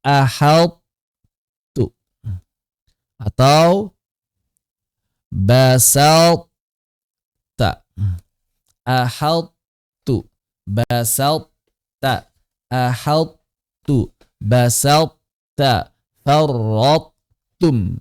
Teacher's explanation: Jadi masuk ke huruf ta dengan masih menyisakan sifat itbaq pada huruf dari huruf ta. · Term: Idgham naqis